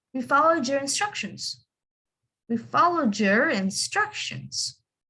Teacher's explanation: So the word followed again into the D, your starts with the Y, so you have the J sound in the middle